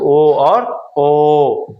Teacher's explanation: ध्वनि कंठ और ओठ से निकलती है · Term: कंठ ओष्ठ